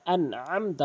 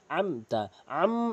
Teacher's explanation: মিম সাকিনের পর তা এসেছে। এজন্য মিম সাকিন কে অবশ্যই গুন্না করতে পারবেন না।